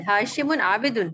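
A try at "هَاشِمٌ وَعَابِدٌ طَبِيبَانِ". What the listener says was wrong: नहीं नहीं नहीं, बीच में भी कुछ है, बीच में भी देखें। हाँ, और का क्या तर्जुमा करते हैं।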